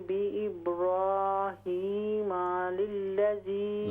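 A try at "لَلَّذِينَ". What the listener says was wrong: लाम पर ज़बर पढ़िए, लल्लज़ी।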